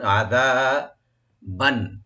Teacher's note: আযাবান আইনটাকে open রাখবেন, জালটাকে right দিয়ে একালিফ টানবেন